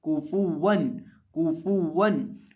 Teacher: और जब वाव के अलावा किसी हरफ के ऊपर पेश आ जाए तो उसको हम होंठों को गोल करके पढ़ते हैं। तो यहाँ काफ और फा को होंठों को गोल करके पढ़ेंगे और वाव को भी होंठों को गोल करके पढ़ेंगे